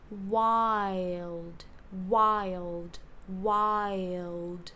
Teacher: shifting all the stress to the beginning we're going to get WI wild wild